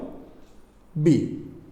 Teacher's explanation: বি দুই ঠোঁট উচ্চারণ মানে বন্ধ করে বের হবে